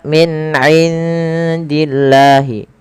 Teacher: suara nunnya disamarkan ke huruf dal karena ia ada bacaan ada bacaan ikhfa, yang mana ikhfa itu cara membaca antara izhar dan idgham. · melafal Allah bila didahului dengan kasrah harus tipis